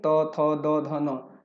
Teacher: तो त वर्ग का दंत से होता है